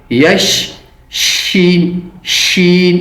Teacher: شین کی آواز سیٹی کی جیسے نکلنی چاہیے، یش شین شین اس طریقے سے اس کو پڑھیں گے.